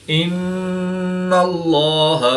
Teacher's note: نون مشدد میں ہمیشہ غنہ ہوتا ہے تو یعنی یہاں پر ہم غنہ آنے کر کے پڑھیں گے. اس میں جلالت اللہ عز و جل کے لام سے پہلے نون مشدد پر زبر ہے تو اس لام کو پر یعنی موٹا پڑھیں گے